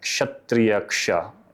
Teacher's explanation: it's actually ka and the fricative s